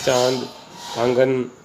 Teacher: एक और मात्रा हम देखते हैं वर्णों के ऊपर, चंद्र बिंदु की। इसका उच्चारण नाक और गले दोनों से होता है, इसलिए इसे अनुनासिक कहा जाता है।